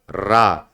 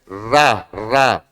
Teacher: और मैंने पिछले क्लासेस में बताया भी है कि रा कैसी ध्वनि है, प्रकंपित ध्वनि है, और रा बोलने पर प्रकंपन भी हो रहा है, तो रा प्रकंपित ध्वनि है।